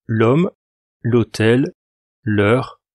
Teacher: Alors dans tous les cas, on n'entend pas le H, il n'est jamais prononcé réellement